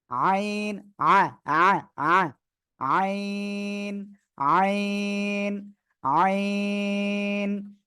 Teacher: চার আলিফ টান হবে এই অক্ষরে